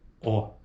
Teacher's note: E a vogal O, olha só, é arredondada.